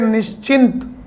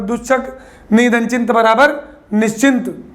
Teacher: चा, छा और सा, बेटा ये एक ही उच्चारण स्थान के हैं, तालु, इसलिए इन्होंने भी अपना उच्चारण स्थान पकड़ लिया।